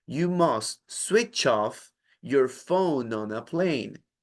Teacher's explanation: En español nosotros no tenemos la necesidad de hacer esto, pero en inglés es muy importante porque si no las palabras se comienzan a ser pausadas. Usted no va a decir, you must switch off, haciendo una pausa que se siente poco natural, sino que las va a ligar · Entonces, en lugar de decir switch off, haciendo una pausa, usted va a decir sui, y ese último sonido, el ch, no lo va a pronunciar allí, sino que lo va a pronunciar pegado a la siguiente palabra